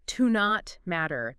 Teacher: Yeah, you might hear it almost like one word, like to not matter. The T in not kind of blends into the M.